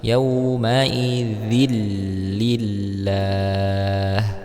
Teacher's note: Ya, bertemu dengan huruf lam, maka di sini dibaca idgham bila gunnah tanpa didengungkan